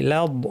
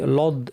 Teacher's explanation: লাদ বলার সময় লাম পাতলা, বদ ভারী, লাদ অনেকে লাম শুদ্ধ ভারী করে লদ এইভাবে বলেন, এটা ঠিক না।